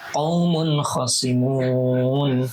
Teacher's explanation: Ada mim berharokat dhammah tanwin bertemu dengan kha, maka harus dibaca dengan idhar atau jelas